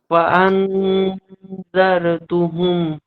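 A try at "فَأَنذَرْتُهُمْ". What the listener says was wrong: নো, নো, আন বললে হবে না। আন বললে স্পষ্ট হয়ে যাবে। ফাআনজারতুহুম।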